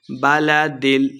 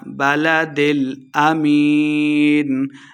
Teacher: بلدل امین، یا مدہ ہے، 2 حرکات لمبا کر کے پڑھیں گے